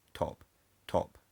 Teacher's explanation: In the word top, the t is aspirated because it's the only thing in the syllable onset, but the p is unaspirated there because it's not in the syllable onset.